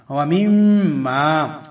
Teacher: واو زبر وا، میم، میم زر میم، یہاں غنہ کریں گے، میم کے اوپر تشدید ہے. و میم، میم الف زبر ما، و میم ما.